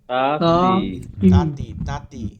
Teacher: এইটার মাখরাজ হচ্ছে এটা, জিহ্বার আগা সামনের উপরের দুই দাঁতের এই গোড়ার সঙ্গে লাগাইয়া তায়ের উচ্চারণ হয়